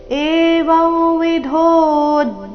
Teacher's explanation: ಅನುಸ್ವಾರದ ಉಚ್ಚಾರಣೆ ನಾಸಿಕ ವ ರೀತಿ